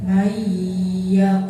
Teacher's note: maka cara bacanya memasukkan huruf pertama ke dalam huruf kedua disertai dengan dengung. Lama bacanya 1 alif atau 2 harakat. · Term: idgham biguna